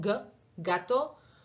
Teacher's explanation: Las velares, como ven en el diagrama, la parte de atrás de la lengua está tocando la parte de atrás de la garganta, que se llama velo